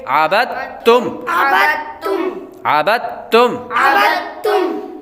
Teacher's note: اب ہجے کرتے ہوئے با کو دال اور تا کے ساتھ ملائیں گے، لیکن جب آواز نکالیں گے، جب ہم اس کو روانگی کے ساتھ پڑھیں گے، رواں پڑھیں گے، بغیر ہجے کے پڑھیں گے، تو با ڈائریکٹ ہی تا کے ساتھ ملا کر پڑھا جائے گا